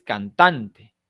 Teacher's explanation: Pero en el caso de la palabra cantante, no es cantante, ni cantante, es cantante. Tiene la mayor fuerza de voz en tan